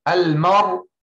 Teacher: Al-mar, drop the hamza. Al-mar, and the ra is heavy. Why? Sakin preceded by fatha. Al-mar, make the mim light.